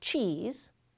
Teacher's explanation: If you start to say the word 'cheese', you'll notice that your tongue is in the position to make a [t] sound, but instead of releasing that alveolar stop completely, like you were in the word 'tease', you release it only partially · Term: affricates